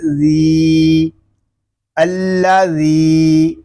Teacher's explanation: ذال کو ہم ایک الف تک کھینچ کر پڑھیں گے کیونکہ یہاں یا مدہ ہو رہا ہے